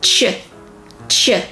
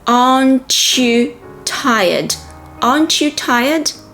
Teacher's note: Another important thing to mention is the link between the T in not and the Y in you. When you link a T and a Y, the sound becomes ch, ch.